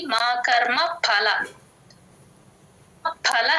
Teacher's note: ఫల అని చెప్పాలి ప కి మహా ప్రాణం పెట్టి